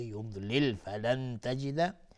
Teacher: نون ساکن بشه تای دو نقطه اخفای حقیقی